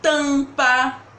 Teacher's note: o m ou o n aparecem em uma sílaba apoiada de uma vogal e aí eles fazem um som nasal de chão em em um por exemplo quando eu falo tampa